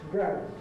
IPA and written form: græbd (grabbed)